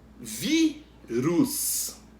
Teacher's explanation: O vi é a sílaba que a gente pronuncia com mais força, é a penúltima. Então, se a penúltima sílaba é a que pronuncia com mais força, é a sílaba tônica.